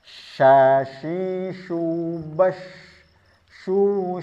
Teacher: Dan dia memiliki satu sifat yang lain yaitu tafasyi. Terkumpulnya nafas di dalam mulut.